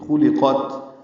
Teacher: تینوں حرکتیں خو اور قاف پورے لام باریک ہے، قاف کو تا سے ملانا ہے، تا ساکن پہ ہمس ہے، سانس جاری رہے گی پڑھتے ہوئے.